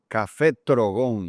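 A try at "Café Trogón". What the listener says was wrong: You really gotta roll your R's there.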